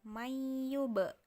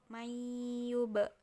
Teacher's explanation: terlalu jauh dari kedua bibir e kedua bibir ini bertemu mayyub jadi bibir atas dan bibir bawah bertemu sambil dipantukan